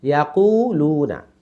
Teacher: তাহলে ইয়া তাড়াতাড়ি, কুতে টান, লুতে টান, নু তাড়াতাড়ি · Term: ওয়াও মাদ